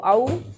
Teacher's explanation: वाओ लीन है, नरमी से आसानी से जल्दी से अदा करेंगे